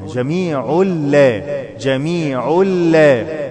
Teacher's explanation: تنوين وبعده لام ادغام بدون غنه